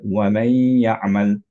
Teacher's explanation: দেখেন এটার উপরে সুকুন নাই, তখন আপনি বুঝবেন যে এই নুনটা পরের ইয়ার সাথে মার্জ হয়ে যাচ্ছে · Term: গুণনা